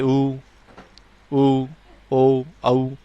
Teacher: आगे हैं पक्ष स्वर, यानी कि जीवा के पिछले हिस्से से उच्चारित होने के कारण इन्हें पक्ष स्वर कहते हैं